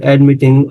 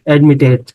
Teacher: Admit is accented on the last syllable and the final consonant is preceded by a vowel, so we double the T before adding, for instance, an ing or ed, admitting, or we can say what?